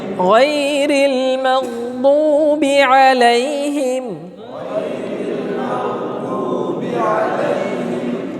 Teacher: দ হরফটার উচ্চারণটা হয় জিহ্বার কিনারা সাইড জিহ্বার সাইডের কিনারা ডানে হোক বামে হোক অসুবিধা নাই মাড়ির দাঁতের গোড়ার সঙ্গে লাগাইয়া মাড়ির দাঁতের গোড়ার সঙ্গে লাগায়া এই মাখরাজ বললে ছাত্ররা মশকের পিছনে